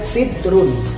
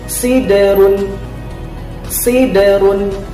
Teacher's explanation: Nah, jadi membacanya bukan sidrun, tapi siderun. Huruf da sukunnya memantul